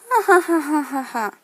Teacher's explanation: you find nasality in post laughter, that kind of ha ha ha ha ha ha sound that you never get.